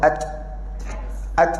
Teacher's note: makhraj huruf ta memang dekat belakang gigi atas